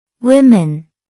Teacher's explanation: That's 2 syllables. The stress is on the first syllable.